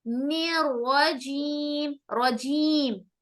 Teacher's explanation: رجیم میں را کو موٹا کریں گے. کیوں؟ را کے اوپر زبر آ رہا ہے.